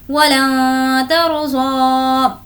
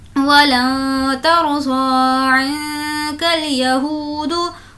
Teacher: ता भी हुर्फ़ इख्फ़ा में से है और नून साकिन के बाद है इसलिए नून की आवाज़ को नाक में छुपाएंगे।